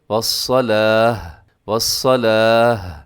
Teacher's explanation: گول تا پر وقف کریں گے تو اس کو ہا کے ساتھ چینج کر دیتے ہیں ، والصلاتی، لیکن وقف ہوگا تو والصلاة، والصلاة، اس طرح بولنا · اس طرح بولنا ہے کہ آخر میں ہا کا ساؤنڈ بھی آنا چاہیے ، کیونکہ تا ہا سے بدلتی ہے تو ہا کا ساؤنڈ